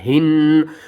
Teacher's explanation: ہا کو ہم نے حلق کے سب سے نیچے والے حصے سے ادا کرنا ہے